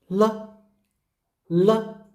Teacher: for the L sound, your nose is not buzzing.